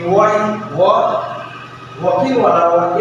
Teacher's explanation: तो निश्चित रूप से मैंने आपको बताया है कि वह वकील वाला वह एकमात्र वर्ण है जिसका उच्चारण आपका दंतोष्ठ्य से होता है